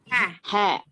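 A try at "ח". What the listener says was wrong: ha, not ha. This is not hey. This is ket.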